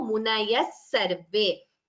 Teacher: Visarga followed by sa becomes visarga sakara sandhi.